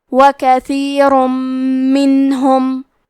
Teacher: پھر حرف المیم آتا ہے کلمت منہم، میم حروف الادغام بغنہ میں سے ہے تو ہم یہ حکم کو غنہ اور تشدید کے ساتھ ادا کریں گے · کلمت کثیر میں حرف تھا کی ادائیگی زبان کے سر اور اوپر کے دانتوں کے اندرونی کناروں سے ہے